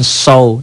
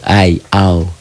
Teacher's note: Nah, ini diptong ya. Membaca diptong itu a dan i dan a dan u, tuh, ai, au.